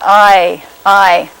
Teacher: start back here in the position for ah, and then move your tongue quickly to the position for e, and you glom that sort of together, that motion so quickly it goes from ah to all in one syllable, then you've got what's called a diphthong, I.